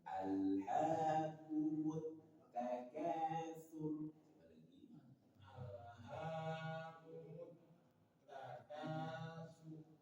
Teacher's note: Ketika tak bertasydid agak ada ditahan sebentar